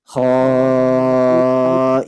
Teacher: Ketika fathatain bertemu ya yang bertasydid, maka itu idgham bi gunnah ditahan Bu ya, dengung.